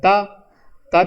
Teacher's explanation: त का उच्चारण किससे होता है दंत से होता है